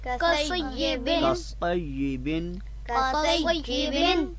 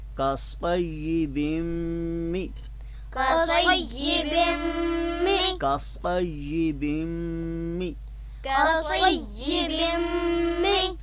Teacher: اس کے آگے اگر میم مشدد آتی ہے تو ہم اس نون کو اس میم میں مدغم کر دیتے ہیں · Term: ادغام